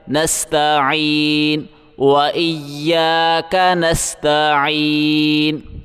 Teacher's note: عین کو گلے سے زور لگا کے نکالیں گے اور عین کو ایک الف کی مقدار کھینچیں گے کیونکہ اس کے اوپر کھڑا ہے۔